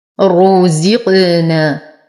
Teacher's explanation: هذا الذي، يا ساكنة ما قبلها مكسور فهو من الطبيعي حركتين. رزقنا، نفخم الراء مع إتمام الضم، نتم كسرة الزاي مع الترقيق، نقلقل القاف لأنها ساكنة من حروف قطبي جد